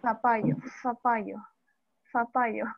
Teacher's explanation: Los interdentales, donde el ápice de la lengua se introduce entre los incisivos superiores e inferiores. Y a la vez cerramos un poquito los dientes para producir este sonido.